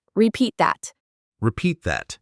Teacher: The T at the end of repeat almost disappears.